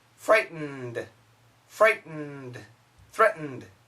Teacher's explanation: so the N is very long